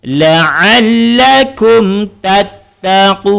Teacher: Jadi untuk izhar syafawi, bibir kena rapat tetapi jangan didengungkan ataupun jangan ditahan.